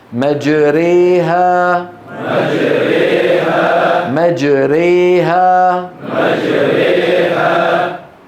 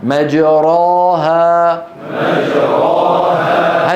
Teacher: هي النطق بالألف الممالة بين الألف والياء الصحيحتين · هذا في اللغة. واصطلاحا تقريب الفتحة من الكسرة والألف من الياء من غير قلب خالص ولا إشباع مبالغ فيه · يعني في الوسط تماما، ألف وياء مخلوطتين بنسبة 50% 50% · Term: ألف ممالة, إمالة